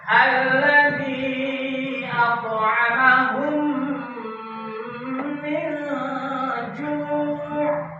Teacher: memasukkan huruf mim yang pertama ke dalam huruf mim yang kedua, disertai dengan suara gunna sekitar 2 ketukan atau 2 harokat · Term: idgham misli